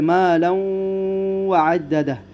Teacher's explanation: یہاں پر ادغام بالغنہ ہوگا، تنوین کے بعد حرف واو آیا ہے